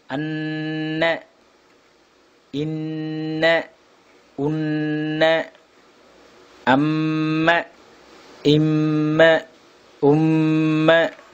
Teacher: மூக்கு துவாரத்திலிருந்தும் குன்னா எழுத்துக்களான இவைகள் வெளியாகும் · ஒரு அலிஃப் அளவு சப்தத்தை மூக்கில் நிறுத்தி ஓதுவதற்கு உன்னா என்று சொல்லப்படும்